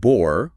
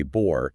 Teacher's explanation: The word bor, with a short O, translates to wine. But if a speaker actively holds that vowel longer to say bor, the meaning shifts entirely to boron, the chemical element. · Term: contrastive length